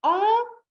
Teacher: Quand je dis « en », c'est un « a » qui passe dans mon nez